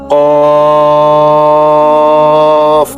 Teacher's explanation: জিহ্বার গোড়া তার বরাবর উপরের তালুতে লাগাইয়া শক্ত করে বলতে হয়।